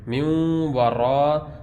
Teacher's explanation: اب نون ساکن کے بعد واو ہے تو واو میں غنہ ہوگا، غنہ کر کے پڑھیں گے، میوں ورا، را موٹا پڑھیں گے، اس میں را کے اوپر زبر ہے۔